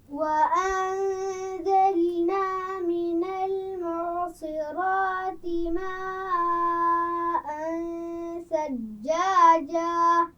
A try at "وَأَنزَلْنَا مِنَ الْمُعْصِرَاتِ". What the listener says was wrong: انزلنا زا کے مخرج کو واضح کیجئے، من المعصرات عین کے مخرج کا بھی خیال رکھنا ہے۔ دوبارہ پڑھیے،